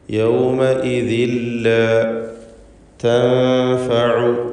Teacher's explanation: യൗമഇദിൻ എന്നതിലെ തൻവീനിനെ പൂർണ്ണമായും ശേഷമുള്ള ലാമിലേക്ക് ലയിപ്പിച്ച് മണിക്കാതെ ഉച്ചരിക്കുക. ഇദ്ഗാം ബിഗൈരി ഗുന്ന കാമിൽ. · യൗമഇദിൻ ലാ തൻഫഉ. ഈ പദത്തിലെ സാക്കിനത്തായ നൂനിനെ ഇഖ്ഫാ ഹഖീഖി നൽകി മറച്ചു മണിച്ചുച്ചരിക്കണം. മണിക്കലിൽ തർക്കീഖാണ് വേണ്ടത്.